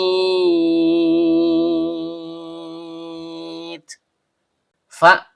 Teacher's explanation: فَلْيَعْبُدُوا رَبَّ هَذَا الْبَيْتِ. Fa huruf bibir, yaitu perut bibir bawah bertemu dengan ujung gigi seri atas